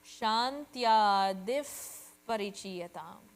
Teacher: But it's followed by Pa. It's hard to pronounce Pa without air, so we borrow Fa sound. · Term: Visarga